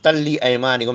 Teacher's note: یہاں پر ادغام ہے تے میں اور لام میں